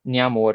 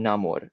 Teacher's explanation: And you don't really have to look over all this data here, but basically all the center columns demonstrate that the palatal nasal from PMP merged with the alveolar nasal in Proto Batak. And this stands in contrast to all the neighboring Malaic languages, which retained palatals.